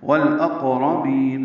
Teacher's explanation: لام ساکن پہ اظہار قمری، قاف ساکن پہ قلقلہ راپور. والاقربین بی یا مدہ.